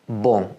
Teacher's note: the sound doesn't just come out of your mouth it also sneaks up into your nose as well